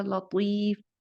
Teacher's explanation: طا کی آواز کو پر کرتے ہوئے لام کو پر نہ کیا جائے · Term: لام باریک